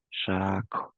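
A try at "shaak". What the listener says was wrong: I hear in some of this I hear a double A for shak. It's shak, short, and put your lips around the K. Shak.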